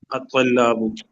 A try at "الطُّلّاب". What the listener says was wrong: طلاب۔ تا پہ زبر نہیں ہے، تا پہ پیش ہے، ضمہ ہے۔